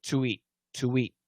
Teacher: And in daily English, we want to link those vowels. So you just can't link two vowels. We need a consonant to do the linking. So in this case, we use a W.